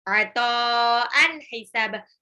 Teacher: Tanwin ketemu ha izhar, dibaca jelas.